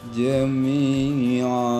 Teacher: disebut mad iwad karena mad merupakan pengganti dari tanwin karena diwakofkan dan dibaca panjangnya 2 harokat